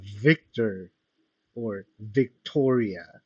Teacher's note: el aire pasa entre el labio y los dientes, generando fricción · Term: labiodentales